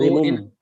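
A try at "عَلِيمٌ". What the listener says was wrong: it should not be alimum. Sound of meme should not come. It should be adabun ali mun, but there should be an ikfa, which means that sound should go in the nose. So adabun ali mun bima kanu, not adabun ali mum.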